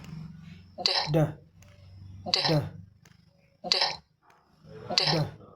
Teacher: ऊपर वाले दांत के पीछे जो है हमारी टंग टच करती है